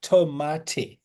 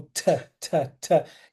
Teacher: o t do do inglês ele é mais aspirado